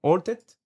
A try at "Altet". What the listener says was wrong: Altet, that's right. It's an H. You're a Frenchman. French, you don't pronounce the H's. Halted.